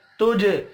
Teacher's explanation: वला तुजज़ऊन, वला अलिफ मद्दा है, एक अलिफ के बराबर खींच कर पढ़ेंगे। तुज जीम साकिन पर कलकला करना है